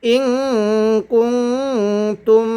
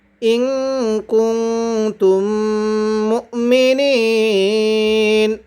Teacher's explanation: নুন সাকিনের পরে কাপ ইকফার হরফ গুন্নাহ করে পড়তে হবে। এখানে নুন সাকিনের পরে তাটাও ইকফার হরফ, তাই গুন্নাহ করব।